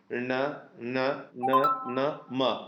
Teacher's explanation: ನೀವು ಅಬ್ಸರ್ವ್ ಮಾಡ್ಬೋದು. ಣ ನ ನ ನ ಮ, ಮೂಗಿನ ಸಹಾಯದಿಂದಲೇ ಅಕ್ಷರಗಳು ಹುಟ್ಟುತ್ತಾ ಇರೋದ್ರಿಂದ ನಾವು ಅದನ್ನು ಅನುನಾಸಿಕ ಅಂತ ಕರಿತೀವಿ.